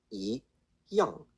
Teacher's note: Do remember the Y is not really pronounced